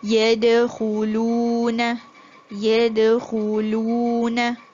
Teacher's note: The waw mad, you elongate the sound of the u.